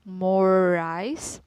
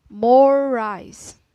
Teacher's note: And I will give you more example in this phrase, more rice is a continuous consonant. When R is linked into another R, it's pronounced for more time. So the R of this phrase, more rice, is said for a longer durations.